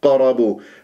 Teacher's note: قاف مفخم مرتبه رابعه ومقلقله اذا قلقله لازم انا اضرب المخرج واهرب بسرعه